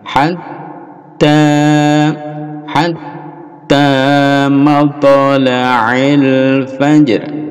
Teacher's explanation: Hatta ada tasdid ditekan ya, lalu dipanjangkan